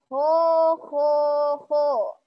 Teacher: Huruf kho makhrajnya di tenggorokan atas sama seperti ghain.